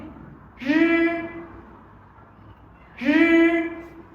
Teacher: âm này khác với cả tiếng Việt mình, âm này sẽ không rung